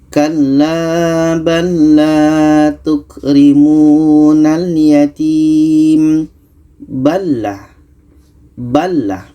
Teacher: Huruf pertama sukun atau mati, huruf yang kedua berbaris. Maka cara bacanya lam ini kita masukkan ke lam yang kedua. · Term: idgham mutamathilan